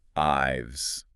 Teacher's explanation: If it comes immediately after a vowel, like the word I, your vocal cords are already vibrating from the vowel sound. So slipping a simple V sound at the end is effortless